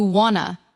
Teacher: Want to quietly blends into something closer to wanna